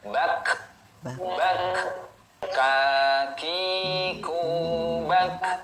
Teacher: ketika sukun ada suara H, ada hamas namanya, nafas yang mengalir.